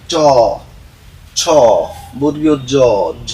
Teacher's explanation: তালু থেকে উচ্চারিত হয় বলে এই বর্ণগুলোকে বলা হয় তালব্য বর্ণ